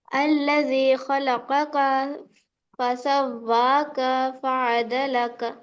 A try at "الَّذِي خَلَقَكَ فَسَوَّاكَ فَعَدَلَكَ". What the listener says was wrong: کاف دو بھی کاف کھینچے گئے، خلق کا فسوا کا نہیں کھینچے گا نا نا، متحرک. جلدی پڑھنا. الذي خلقك فسواك فعدلك.